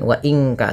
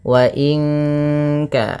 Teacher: langsung kepada makhraj huruf ka yang di mana kaf makhrajnya pangkal lidah kita di pangkal lidah